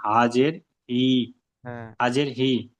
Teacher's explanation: জেরটি হলো হারাকাত, হারাকাতের পড়াকে তাড়াতাড়ি পড়তে হয়, টান দেওয়া নিষেধ।